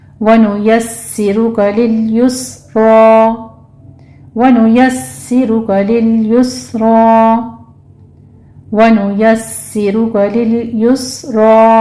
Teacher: वनुयस्सिरु में सीन के ऊपर तशदीद है, नीचे कसरा है, आवाज़ को बारीक कर लीजिए, सख्ती से अदा करना है सीटी की आवाज़ के साथ।